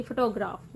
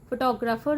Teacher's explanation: ਫੋਟੋਗ੍ਰਾਫ ਵਿੱਚ primary stress ਪਹਿਲੇ syllable ਤੇ ਹੁੰਦਾ ਹੈ, ਫੋਟੋਗ੍ਰਾਫਰ ਦੇ ਵਿੱਚ ਪ੍ਰਾਇਮਰੀ ਸਟ੍ਰੈਸ ਦੂਜੇ ਸਿਲੇਬਲ ਤੇ ਹੁੰਦਾ ਹੈ